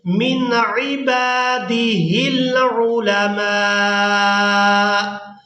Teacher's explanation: تو یہاں حمزہ کو بھی ساکن کر دیا جائے گا، میم کو کھڑی زبر اور مد کی وجہ سے کھینچتے ہوئے اس حمزہ کے ساتھ ملائیں گے